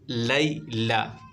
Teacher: یالین ہوگا، بغیر کھینچے پڑھنا ہے، یہاں پر کوئی کھینچنے کی آپ کو ضرورت نہیں ہے، لئی کر دیتے ہیں بچے، یہاں پر توجہ دیں بالکل، لیلا۔